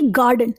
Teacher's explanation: गा ये क्या है, स्ट्रेस्ड है, और डन क्या है, अनस्ट्रेस्ड है।